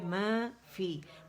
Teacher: ٹھیک ہے، میں کیا ہے، میں الف مدہ ہے، یعنی یہ الف ممدودہ جو ہے یہ میم کی آواز کو، زبر کی آواز کو 2 کاؤنٹ کے لیے اوپر کی طرف کھینچ رہا ہے. ٹھیک ہے، تو یہ کیا مد طبیعی ہے، مد اصلی ہے.